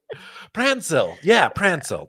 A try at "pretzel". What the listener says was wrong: say pretzel though. Pretzel. Like say it the way I say it. No, it's not prance. Prince. Prenzel. Prinzel. Like, I guess I would spell it Princzel. Prenzel.